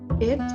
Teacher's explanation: the word it that is pronounced in the front area and the height of the tongue is in the middle of high and mid